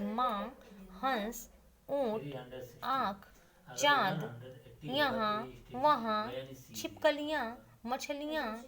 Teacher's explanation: लेकिन जब अनुनासिक वर्णों का हम उच्चारण करते हैं, जैसे माँ, हंस, ऊंट, आँख, चांद, यहाँ, वहाँ, छिपकलियाँ, मछलियाँ, तो हमारे मुंह से और नाक से दोनों से हवा बाहर निकलती है, इसीलिए इसे अनुनासिक वर्ण कहते हैं।